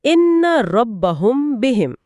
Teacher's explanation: इसमें हंट मजबूती से बंद नहीं होंगे बल्कि हल्के से एक दूसरे को छुएंगे और एक छोटी सी गुनगुनाहट यानी गुन्ना होगा। · اس میں ہونٹ مضبوطی سے بند نہیں ہوں گے بلکہ ہلکے سے ایک دوسرے کو چھوئیں گے اور ایک چھوٹی سی گنگناہٹ یعنی غنہ ہوگا۔ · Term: اخفاء شفوی